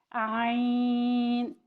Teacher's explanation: اس کو حلق سے ادا کریں گے اور اس کی آواز باریک ہوتی ہے۔